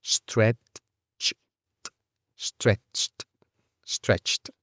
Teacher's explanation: Tenemos múltiples consonantes juntas que deben ser practicadas para una pronunciación correcta. Tenemos stret como primera parte, después una ch y después otra t. Y eso todo junto al final de la palabra.